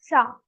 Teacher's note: So the sha will also be pronounced from your talu.